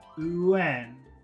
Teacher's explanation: We're putting a big oo sound in the front. UN. So this is a very long vowel sound in front of the N.